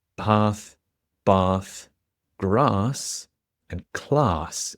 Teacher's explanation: And it's a specific type of letter A. In British English, we'll call this a long, broad A sound, which sounds like ah.